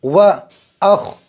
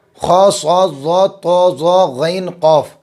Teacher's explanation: خا پر جزم ہے، خا بھی پر ہوگا، 7 حروف ہمیشہ پر، خا صاد ضاد طا ظا غین قاف۔